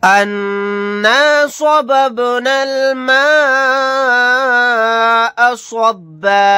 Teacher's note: नून के ऊपर तशदीद है, यहाँ गुन्ना करके पढ़ेंगे।